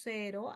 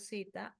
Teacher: Es utilizar la S en lugar de la Z. · Esto es no diferenciamos la S de la Z. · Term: ceseo